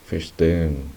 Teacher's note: esta H lo que hace es alargar el sonido de la E